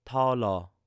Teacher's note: So it's a very light T sound at the beginning.